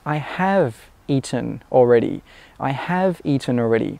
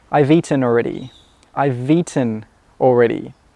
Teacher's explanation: We don't say I have, we say I've, and we don't say I've eaten. The I've and the eaten come together.